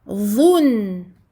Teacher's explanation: Le dha est emphatique. Le noun sakin, bayniyah, écoulement partiel, je donne une durée moyenne au premier noun que j'entends